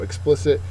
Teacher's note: it's an adjective second syllable is accented